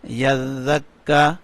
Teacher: اور یہ اگلا جو زال ہے، جو دال کے آگے زال آتا ہے، اس میں نرمی ہے، اس میں سیٹی کی آواز بالکل نہیں آئے گی، اس کو نرم کر کے پڑھیں گے۔